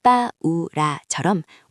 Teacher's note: 우에 악센트가 붙어 우가 한 음절로 분리되는 것을 확인할 수 있습니다. 마치 악센트가 양모음을 강한 모음처럼 만들어주는 셈이죠. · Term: 모음의 분리